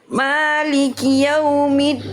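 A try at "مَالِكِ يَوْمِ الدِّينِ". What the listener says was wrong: Jangan middin. Maliki yaumiddin. Jangan ada percikan nafas dari huruf dal, karena dal sifatnya adalah jahr, bukan hams.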